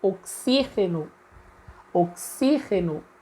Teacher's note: Então, o xi seria a sílaba tônica da palavra no espanhol. Como as sílabas tônicas são diferentes, mais uma vez, em ambas as línguas, oxigênio ou oxígeno é uma palavra heterotônica.